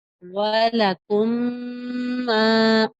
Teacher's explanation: تو میم ساکن کو میم متحرک کے ساتھ ملا کر اس طرح ادا کریں گے کہ دونوں ایک ساتھ مشدد ادا ہو، اور ایسی صورت میں حرکتین مقدار غنہ بھی کرتے ہیں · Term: ادغام شفی